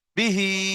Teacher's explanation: বিহি, বাজের বি আর হা খালাজের হি, তাহলে বিটা টান হবে না, হিটা টান হবে। এখানটায় কিন্তু অনেক ভাই উচ্চারণ করতে পারে না, বি হি বলে থাকে।